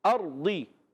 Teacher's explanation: را ساکن سے پہلے زبر آ گیا، را پھر پر ہو جائے گا۔